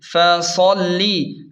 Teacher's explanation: دھیان دیں صاد کو خوب موٹا اور پر پڑھیں گے اور لام پر تشدید کی وجہ سے تھوڑا زور دیں گے